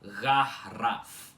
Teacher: Rarraf com esse com esse R do meio enrolado logo depois do A com acento